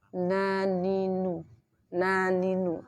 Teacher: Di bagian bibir tidak ada furjah. Tetapi karena mim dan nun sifatnya gunnah, jadi ada aliran di hidung ketika terucap. Bocornya suara lewat hidung.